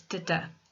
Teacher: So iambic means that it's da-da. So we have an unstressed syllable followed by a stressed syllable